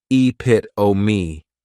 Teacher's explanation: many times people may mispronounce it because the 3rd syllable has that schwa, and the last syllable is that long epit-o-me.